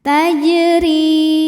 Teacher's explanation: Jim sukunnya asli dan ada di tengah bacaan dibaca dipantulkan dengan pantulan yang kecil tajri huruf ro dibunyikan secara tarqik sebab berbaris kasrah maka dibacanya · Kemudian ada hukum qalqalah sughra, karena jim sukunnya asli dan ada di tengah bacaan. Dibaca dipantulkan dengan pantulan yang kecil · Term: Qalqalah Sugra